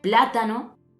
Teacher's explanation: plátano es esdrújula, ya que el acento recae en la antepenúltima sílaba.